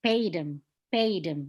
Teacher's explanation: You put a stress on the word pay.